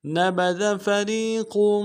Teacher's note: نبذ میں جو ذال ہے اس کو باریک ادا کرنا ہے، فریق میں را کو یا کے سامنے لانا ہے، را کو باریک ادا کریں گے، یا مدہ ایک انتہا بھی کھینچیں گے، قاف کے تنوین کو موٹا کرتے ہوئے، قاف کو موٹا کرتے ہوئے آگے میم کے سامنے لانا، میم کے اوپر تشدید زور دیں گے۔